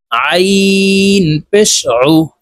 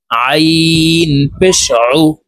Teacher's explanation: আইন হরফ হলকের মধ্যখান থেকে চাপ দিয়ে উচ্চারণ করতে হবে।